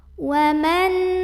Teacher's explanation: Waman ada idhar halqi karena ada nun sukun yang ketemu sama huruf ain. Maka nun sukunnya ini dibaca dengan jelas. Bunyi an dan tidak perlu ditahan.